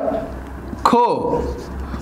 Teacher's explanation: ख चा उच्चार करताना क अधिक ह अस असा होत असतो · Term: महाप्राण